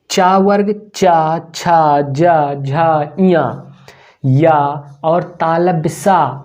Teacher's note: इन सभी वर्णों को हम लोग तालु से बोलते हैं, या फिर कह सकते हैं सभी वर्णों का उच्चारण स्थान तालु है